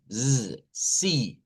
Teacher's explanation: Note que esta es una s vibrante.